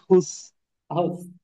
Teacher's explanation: নরম উচ্চারণ হবে, জিহ্বার আগা, সামনে দুই দাঁতের আগা